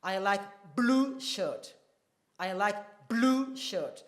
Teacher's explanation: So there is a pause before blue and a small pause after blue. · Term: emphatically stressed word